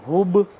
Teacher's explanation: با ہے یہاں پہ ساکن، ہب آواز کو پلٹائیں گے، قلقلہ کریں گے